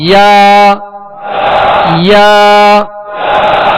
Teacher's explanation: یا کا جو مخرج ہے جیم شین یا, بیچ زبان بیچ تالو, اس سے ادا ہوتے ہیں.